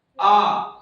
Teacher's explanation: जिनके उच्चारण में मुंह पूरी तरीके से खुले, ऐसे स्वर जिनका उच्चारण करने पर मुंह को खुलना पड़ता है, पूरा खुले, वो होता है विव्रत